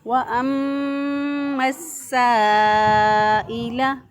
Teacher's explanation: وأما، واؤں پہ ہونٹوں کو گول کر کے ادا کیا، اور میم مشدد پر ہمیشہ گنہ ہوتا ہے، اس کو ایک الف کے برابر گنہ کی آواز کو ناک میں ٹھہرا کر پھر ہم نے ادا کیا